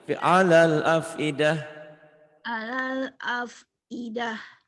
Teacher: Tak marbutoh berubah jadi ha.